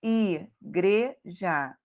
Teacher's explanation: igreja, o gre é o mais forte